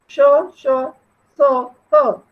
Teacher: ऊष्म व्यंजन माने बोलते समय जिनमें हवा बाहर की तरफ ऊष्मा फेंकी जाती है